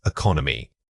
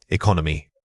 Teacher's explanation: Don't treat all syllables equally when you practice this word. The first vowel is weak and quick. The second vowel needs to carry most of the weight and volume.